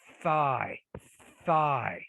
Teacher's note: so the tongue is in between the teeth right which means it's an interdental consonant